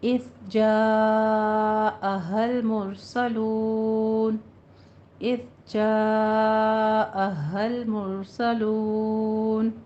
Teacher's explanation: ایزو نہیں کہنا، اذ سٹاپ کرنا ہے، یہاں پہ ساکن ہے، مد متصل واجب ہے، اس کو 5 کاؤنٹ کرنا ہے